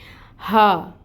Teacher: یہ جو ہا ہے یہ اقصی الحلق سے ادا ہوگی، بھاری ہا ہے، اس میں بھی ہمس ہوتی ہے جو آپ نے واضح کرنی ہے۔